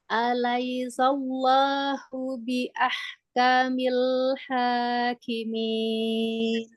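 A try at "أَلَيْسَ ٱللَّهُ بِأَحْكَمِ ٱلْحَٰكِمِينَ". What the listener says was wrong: Kamil, jangan kamil, jangan tebal. Kamil. Jadi caranya pangkalnya ini, pangkal lidahnya ini jangan naik. Kamil hakimin.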